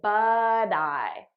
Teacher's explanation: transferring the t sound onto the next word now you'll notice i'm saying it as a soft d because that's american pronunciation